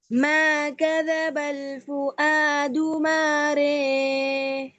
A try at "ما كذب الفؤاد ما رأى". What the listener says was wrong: بہت زیادہ لمبا ہو گیا. مارے بس. رے تسہیل.